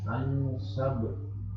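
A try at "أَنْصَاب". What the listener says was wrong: Panjang, saknya panjang dulu. Ansab.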